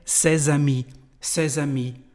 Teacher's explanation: you will have, of course, the liaison between the two words